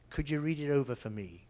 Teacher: I didn't stress the for.